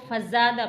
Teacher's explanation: زا کو تھوڑا سختی سے سیٹی کی آواز کے ساتھ ادا کیا جاتا ہے، فزا، دال زبر دا، فزادہ۔